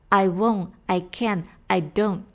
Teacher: 在单词结尾的 NT 组合的 T 在美式英语中也是 stop T。只做一个舌头的位置，但是并不送气。